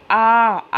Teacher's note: जिन स्वरों के उच्चारण में मुख द्वार पूरा खुला होता है उसे विवृत वर्ण कहते हैं